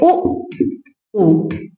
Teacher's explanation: इन स्वरों का उच्चारण करते समय, इन स्वरों का उच्चारण करते समय यानी दोनों होठ आपस में मिलते हैं, दोनों होठ आपस में मिलते हैं और गोल हो जाते हैं